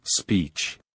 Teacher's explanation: smile and hold the position while saying e lastly end with the CH sound which is a combination of T and Sh place your tongue against the roof of your mouth and release